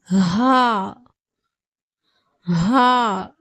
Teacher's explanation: வாவ் அடுத்து அடுத்ததாக பார்க்கக்கூடிய எழுத்து ஹா ஹா உடைய மகர்ப் பிறப்பிடம் வந்து தொண்டையுடைய அடிப்பாகத்திலிருந்து ஹா என்ற எழுத்துடைய உச்சரிப்பு வெளியாகிறது